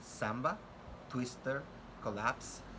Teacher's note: S, which is a voiceless alveolar fricative sound, as in samba, twister, collapse.